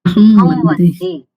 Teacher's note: હવે અહમ પછી વંદે છે તો વકારનો આ પરસવર્ણ શું થાય? અનુનાસિક વકાર થાય.